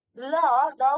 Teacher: আমাদের জিহ্বার দুই পাশ দিয়ে বাতাস বের হয় এবং বেশ জোরেই বের হয়। এটাকে বলা হয় পার্শ্বিক ধ্বনি, মানে পার্শ্ব থেকে যে বাতাস বের হয়।